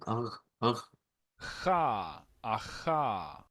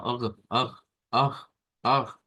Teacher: este sonido pertenece a la parte velar. O sea, es un sonido que se encuentra en el velo de nuestra boca. Y es un sonido, bueno, es como un ugh.